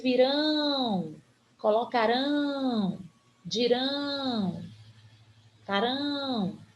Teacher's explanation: tô falando das palavras terminadas dos verbos terminados em a o elas mudam a sua tonicidade a sílaba mais forte é a última portanto elas são oxítona